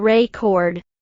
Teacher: If you stress the second syllable record, it's a verb.